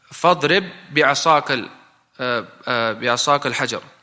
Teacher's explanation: They say that is idgham. You enter the other ba into the other ba because they're similar together.